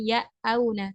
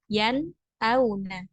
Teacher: Maka nun sukunnya dibaca jelas, bukan bukan yang auna atau juga bukan ya auna, tapi yan auna. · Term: ilhar